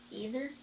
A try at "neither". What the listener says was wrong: This has an N in front of it.